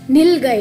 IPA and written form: ˈnilˌɡaɪ (nilgai)